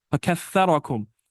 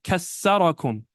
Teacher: Some people pronounce tha with a sa, seen. and they say kassarakum. This is a mistake because it changes the meaning.